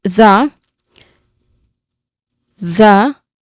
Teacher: the voiced th sound because again when we try to say the word the the your throat vibrates which means that if our throat vibrates when we say um the particular sound then it is considered as voiced sound.